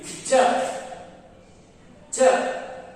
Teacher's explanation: ಮೇಲ್ದವಡೆಯ ಭಾಗ ಅಂದ್ರೆ ನಾಲಿಗೆ ನಮ್ಮ ಹಲ್ಲಿನ ಮೇಲ್ದವಡೆಗೆ ಸ್ಪರ್ಶ ಆಗುತ್ತೆ, ಅದನ್ನು ನಾವು ತಾಲವ್ಯ ಅಂತ ಕರಿತೀವಿ. ಚ ಚ ನಮ್ಮ ಮೇಲಿನ ಹಲ್ಲುಗಳ ದವಡೆಯನ್ನ ಅಥವಾ ಆ ಹಲ್ಲುಗಳ ಬೇರುಗಳಿಗೆ ನಾಲಿಗೆ ಸ್ಪರ್ಶ ಮಾಡುತ್ತೆ.